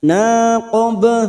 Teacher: ba sukun yang mati asli di tengah kalimat qalqalah sugro, kita pantulkan